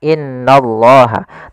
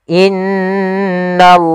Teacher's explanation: in maka ditahan sepanjang dua harakat tidak langsung Dibaca inallah tapi ditahan dulu sepanjang dua harakat untuk menyempurnakan bacaan gunah